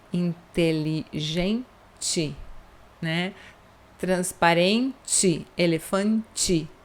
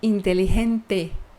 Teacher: Em português, todas as palavras que terminam com TE, nós dizemos ti, certo?